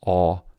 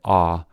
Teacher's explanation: the difference between awe and ah is almost non-existent as the vowel awe is merging with ah